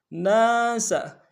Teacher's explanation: سین کی سیٹی باریک ہوگی